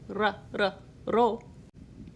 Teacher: In Esperanto, you roll the R. If you don't know how to roll your R's like they do in Spanish, ro, you quickly tap the tip of your tongue just behind your top front teeth.